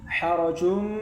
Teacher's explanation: Maknanya masuk. Maka membacanya tanwin di sini dimasukkan ke huruf mim. Dimasukkan ke huruf mim. Jadinya membacanya dengan mendengung. Idgham bighunah.